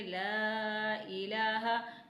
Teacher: لام پہ مد موجود ہے تو اسے 3 حرکت کے برابر کھینچیں گے